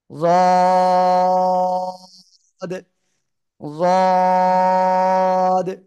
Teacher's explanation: হ্যাঁ, র, রদ, জিহ্বার গোড়ার কিনারা সিম্পল মুখ বন্ধ রেখেছি। এ অবস্থায় উপরে মাড়ির দাঁতের গোড়ার সঙ্গে লেগে থাকে জিহ্বার গোড়াটা। এ অবস্থায় আপনাকে তিন আলিফ টানে উচ্চারণ করতে হবে।